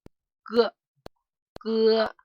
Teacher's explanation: And firstly, for the word ge, it's just like the English pronunciation of go, ge, ge, go, ge, but it is unvoiced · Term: unvoiced ge